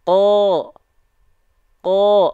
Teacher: kalau dia dibaca dengan vokal o maka dia termasuk ke dalam huruf yang tebal